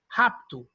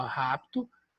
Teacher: coloca-se um I entre o P e o T. E não vão ler rapito, porque aquele apóstrofozinho ali antes do R diz que aquela sílaba é tônica.